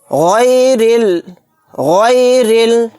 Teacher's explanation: را کو باریک پڑھیں گے کیونکہ را کے نیچے زیر ہے اور را کو لام میں بھی ملا دیں گے۔